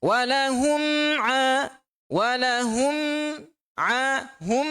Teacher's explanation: Ada dengung tak? Ada. Tapi dengung yang sedikit.